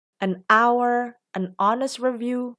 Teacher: kalau dibaca, kata-kata ini menjadi berawalan huruf vokal juga, bukan huruf konsonan